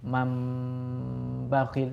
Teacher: suara nu sukun diganti dengan suara mim sukun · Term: iqlab